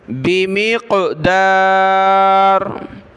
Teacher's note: रा को बारीक पढ़ना है, रा कलरफुल नहीं है.